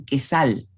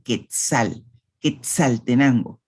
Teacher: este fonema africado alveolar C sí está presente y muy presente en la variante guatemalteca